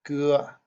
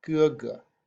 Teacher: older brother in Chinese is ge ge, G-E first tone, ge, repeated, ge ge.